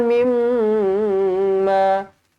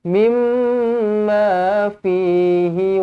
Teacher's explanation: dengungkan dua harakat di sini, mim sabdu wajibul gunnah, rapatkan bibir